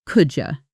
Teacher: The D and Y sounds blend into a J sound.